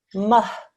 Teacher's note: So the mim will join on with this ha sakin.